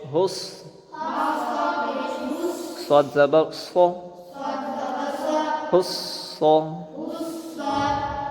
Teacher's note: ہا صاد پیش حس، اور صاد پور بھی ہے اور اس میں سیٹھی بھی ہے